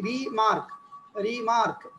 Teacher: যেমন for example the word রিমার্ক, দেখেন এই রিমার্কের মধ্যে আমরা যে ভাগ করি রিমার্ক, রিমার্ক পরে মার্কটা হলো স্ট্রেসড সিলেবল আর রিটা হলো আনস্ট্রেসড সিলেবল